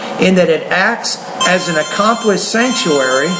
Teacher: it out all together notice how when I read it though I put more stress on the adjective and the noun